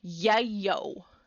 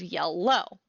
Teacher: So instead of saying yellow, they'll say yellow with a W. Or sometimes we get a y sound for L. So we might get yayo instead of yellow.